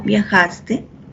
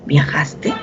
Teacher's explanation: Entonces yo afirmo viajaste, el tono es un tono descendente, pero si yo hago la pregunta ¿viajaste? El tono es ascendente.